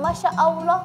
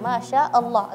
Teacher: jangan barengan ya hamzahnya habisin dulu baru ke huruf lam